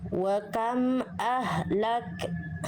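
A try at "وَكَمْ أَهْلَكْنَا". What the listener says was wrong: Ya, jangan dikasih bunda. Itu bunda masih ngasih bunyi di ujung pelafalan k-nya. Wa kam ahlakna.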